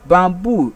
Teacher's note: bamboo is also a noun word it takes its stress on the second syllable